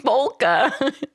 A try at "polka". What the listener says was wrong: you're throwing that l in there hard